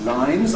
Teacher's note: we’ve got /n/ + /z/, voiced consonants + /z/, (e.g.,) ‘line’ /laɪn/ gives us ‘lines’ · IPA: / laɪnz/